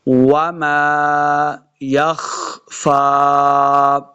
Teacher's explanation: واو کو جب پڑھیں گے دونوں ہونٹ گول کرنے ہیں، تب واو کا مخرج صحیح ادا ہوگا.